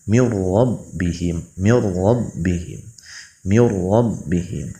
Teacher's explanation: cukup diidghamkan saja tanpa disertai gunnah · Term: idgham bilagunnah, idgham bila gunnah